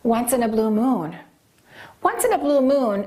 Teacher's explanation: we don't stress blue we stress moon